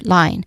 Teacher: There's a combination of two vowel sounds that glide together. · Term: diphthong sound